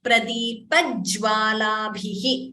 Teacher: Please note the j is doubling here. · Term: Dvitvam